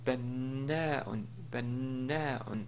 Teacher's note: un doublement de la consonne où la première possède un sukun et la deuxième est vocalisée. Ici, par exemple, on prononce na, na, donc au lieu de na tout court, comme dans banna'un, banna'un, un maçon.